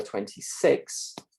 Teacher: in New Zealand English the kits lexical set is consistently what we call Centralized in the mouth